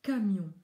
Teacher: Il n'y a pas de vibration des cordes vocales, mais on entend cette échappée d'air assez brutale qui sort du fond de la bouche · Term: une sourde